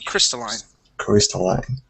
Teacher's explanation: So accent at the very beginning.